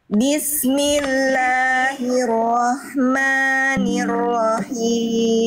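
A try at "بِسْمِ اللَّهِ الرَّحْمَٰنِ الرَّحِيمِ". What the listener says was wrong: Oke, himnya kurang Bunda. Nafas berbisiknya kurang. Lebih berbisik lagi. Dari tengah tenggorokan. Bismillahirrahmanirrahim.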